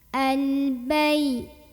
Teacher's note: lam ini dibunyikan dengan jelas atau diidharkan ya. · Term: idhar qamari